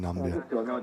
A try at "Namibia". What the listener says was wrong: Yeah, sorry, but Andy mentioned you are supposed to pronounce the I, so it's like Namibia.